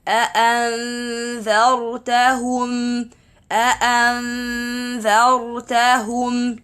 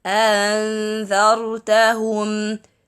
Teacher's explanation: we have to cut the sound completely for the first then cut it again on the second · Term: two Hamza